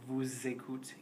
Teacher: you are going to hear that S carry over in a Z sound